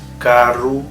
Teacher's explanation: A letra R é sempre vibrante, como o nosso R entre vogais, carro.